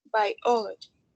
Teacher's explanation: it has four syllables and the more stress is the second one